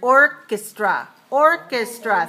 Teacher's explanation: three syllable stress the first syllable right not the second